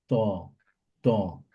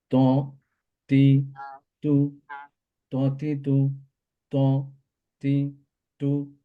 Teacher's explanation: tip of the টাং touches gum of the upper টু front সামনের দুই দাঁতের গোড়ার সাথে লাগিয়ে সামনের দুই দাঁতের গোড়ার মধ্যে